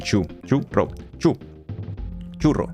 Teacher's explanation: it has the stress on the first syllable